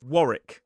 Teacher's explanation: Two syllables, stress on the first: Warrick.